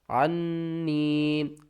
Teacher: عین کو نون سے ملائیں گے، نون مشدد ہے، گنہ کریں گے، عین، نون زبر عن، نون یا زیرنی، عنی.